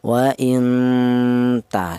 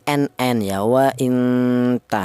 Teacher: Yang mana yang dibaca samar ini, non mati ini cara bacanya dibaca samar atau disamarkan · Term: ikhfa